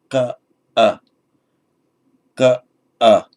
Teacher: with the back of the tongue, you've pronounced a k sound